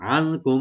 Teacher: নুন সাকিন এখানে আমরা এখানে একফা করব, আর মিম সাকিন এখানে আমরা এজাহার করব। এখানে নুন একফা হবে আর মিম সাকিনে এজাহার হবে, এখানে গুনাহ হবে না।